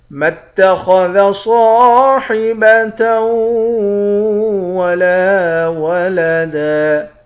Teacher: خا اور صاد یہ دونوں موٹے حرف ہیں، ان دونوں حرف کو موٹا پڑھیں گے۔ صاد کے بعد الف ہے، الف حروف مدہ ہے، ایک الف کے مقدار کھینچیں گے۔